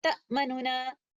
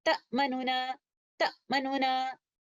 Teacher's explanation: اور آپ محسوس کرتے ہیں کہ پہلے والے نون جس کے اوپر ضمہ ہے میں نے اس کا تھوڑا سا ٹائم لے لیا ہے اور اسی طرح میں نے اس کو اظہار کے ساتھ پڑھنا ہے اختلاس کرتے ہوئے.